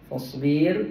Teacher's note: Fasbir, kita jumpa dengan ra. Ra ini dibaca dengan nipis kerana sebelumnya baris bawah